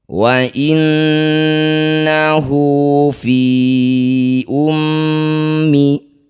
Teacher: Setiap ada hu atau hi yang dibaca panjang disebut bacaan namanya mad ssilah qasirah. Panjangkan hu ini dua harakat atau dua ketukan. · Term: madsilah qasiroh